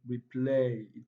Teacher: The play contains longer and louder pronunciation, also higher in pitch compared to re.